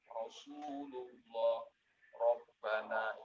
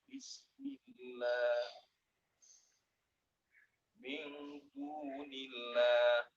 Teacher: lam jalalah, ya, ini juga dibaca tebal apabila didahului dengan huruf yang berharokat fathah dan dhammah.